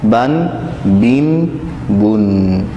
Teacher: تنوین میں آخر میں نون ساکن کی آواز سنائی دیتی ہے، نون ساکن کا ساؤنڈ سنائی دیتا ہے تنوین کے آخر میں، جیسے با دو زبر بن، با دو زیر بن اور با دو پیش بن، بن بن بن، آخر میں نون کی آواز آئے گی۔